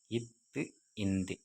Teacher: நாவின் நுனி மேல்வாய்ப்பல்லின் அடி